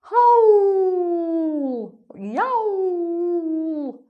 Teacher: howl or yowl, nice round open vowel sound.